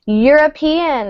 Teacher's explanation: European, it's spelled with a vowel, but we pronounce it with a y sound, which is a consonant.